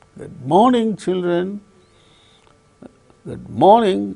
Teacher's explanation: When you are uttering appropriate word, morning, then we can notice the falling tone occurring on the word morning.